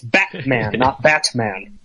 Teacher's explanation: probably about 30% of our consonants are just dropped into glottal stop